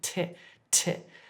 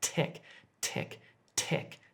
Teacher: when I'm saying tech, as in technology, my tongue is actually just touching the back of my front teeth.